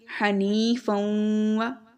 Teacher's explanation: ناک میں آواز لے کر جا رہے ہیں، ادغام بھی کر رہے ہیں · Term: غنہ پلس ادغام